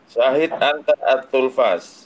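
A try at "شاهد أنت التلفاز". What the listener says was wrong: At-tilfaz, kasrah. At-tilfaz, kasrah. Tanya kasrah.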